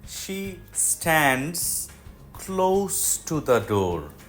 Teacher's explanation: sound ক্লোজ window is ক্লোজ টু দ্যা ডোর দরজার কাছে এখানে ক্লোজ এডজেক্টিভ সেখানে এস সাউন্ড হবে